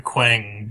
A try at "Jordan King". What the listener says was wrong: Yeah, Quang. Why do you gotta throw that W in there, man? It should just be Jordan King.